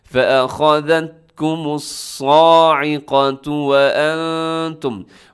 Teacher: साइक़तु, साद मोटा है, इसे साइक़ा नहीं पढ़ना आपने